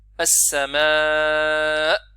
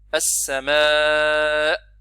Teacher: hamza avec sukoun, elle se produit en fermant les cordes vocales, en appliquant les deux cordes vocales l'une sur l'autre